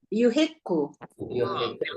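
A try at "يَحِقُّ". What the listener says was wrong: Nah, kenapa Ibu baca yu? Kan 3 itu. Yang pakai yu itu 4.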